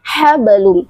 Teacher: Setelah huruf ha kecil terdapat huruf ba yang disukunkan. Ingat ketika ada huruf ba sukun maka sifatnya adalah qalqalah yaitu memiliki sifat pantulan